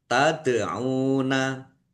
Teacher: Taduna dal sukun bacaan qalqalah dibaca memantul ditampakkan pantulannya.